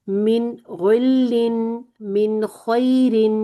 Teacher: من اس کو تھوڑا سا لمبا نہیں کرنا ٹھیک ہے بس من پورا پورا اظہار کر دیں